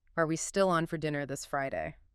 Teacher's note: That rising pitch signals I expect a yes or no answer or I'm seeking confirmation.